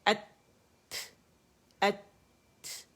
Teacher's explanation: ظاہر طرف اللسان جو ہے یہ لگتا ہے پیچھے گم لائن پہ